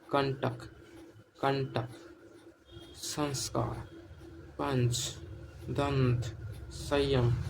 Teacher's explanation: इसमें नाक से अधिक और मुख से कम वायु निकलती है इसे ही हम अनुस्वर कहते हैं।